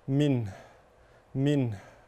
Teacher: اذا وقفنا على كلمه منه لابد من بيان الهاء لان الهاء الاخيره هذه حرف ضعيف اذا لم نبينه يتلاشى ولا يظهر فيقول البعض خطا من اين